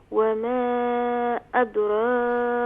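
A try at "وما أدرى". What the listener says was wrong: ادو نہیں کریں گے، دیکھیں اسے دال کو لائٹ کریں گی. وما ادرا، ہاں دال جو ہے یہ فل ماؤتھ لیٹر نہیں ہے.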